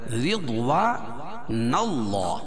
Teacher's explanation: اللہ کے لام سے پہلے نون کے اوپر زبر ہے تو اللہ کا لام پر پڑا جائے گا · را کے نیچے زیر ہے تو را کو باریک پڑھیں گے